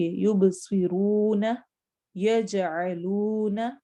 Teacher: ایسے ہی واو مدہ ہے، کہیں پر بھی واو ساکن ہے اور اس سے پہلے پیش آ رہی ہے، ضمہ آ رہی ہے، تو اس واو کو 2 حرکت لمبا کریں گے